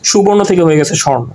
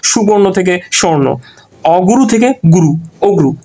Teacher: স্বরলোপ মানে হচ্ছে স্বরধ্বনি লোপ পাবে মাঝখান থেকে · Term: মধ্য স্বরলোপ